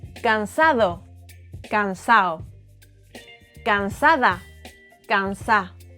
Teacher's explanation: We also eat the D's between vowels.